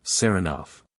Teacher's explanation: he pronounces the name with the stress on the second syllable